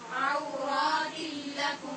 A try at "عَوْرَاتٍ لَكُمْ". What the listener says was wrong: آپ کی را اب مسلسل غلط پڑی جا رہی ہے.